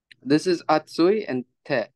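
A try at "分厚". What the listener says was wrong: Atsu de, correct. In this case, it does get rendaku, so it turns into atsu de. Otherwise, it turns into atte, which sounds too much like a burn. So atsu de.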